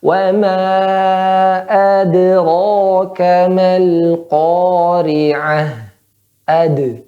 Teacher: dan dal itu huruf yang baca tipis, jadi mantulkan tipis kan